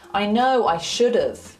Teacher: So instead of saying I should have, he says should've. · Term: contraction